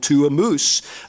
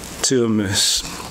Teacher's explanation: the Scottish pronunciation of mouse is still moose